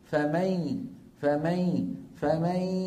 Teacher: ويبقى من النون غنتها، ما عاد طرف اللسان يقرع مخرج النون، يعني ما أقول فمن يعمل فمن، ما في فمن، اللسان بطل عمله. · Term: إدغام بغنة